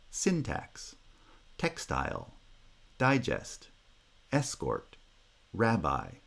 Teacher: in each word the first syllable gets primary stress and is therefore pronounced with higher pitch · is the weak foot words like syntax textile digest escort rabbi none of them has vowel reduction because none of them is unstressed but in each word the first syllable gets primary stress and